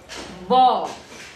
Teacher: Air has to be built behind. Slight air pressure has to be built behind closed lips and released with an audible plosion. Vocal cords are of course vibrating.